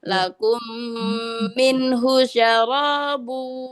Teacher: Non ketemu ha enggak ditahan.